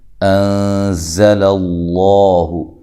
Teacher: انزل اللہ، نون ساکن کا اخفا ہے، زا کو زور سے ادا کرنا ہے، سختی سے ادا کرنا ہے، اور سیٹی کے ساتھ ادا کرنا ہے